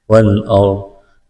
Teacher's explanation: اس سے پہلے زبر ہے تو را کو موٹا کرنا ہے